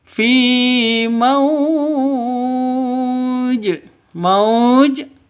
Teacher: mad lin ya karena wau mati diawali dengan fathah berada di waqaf ya sifat Lin berada di wakaf itu mad lin Panjang boleh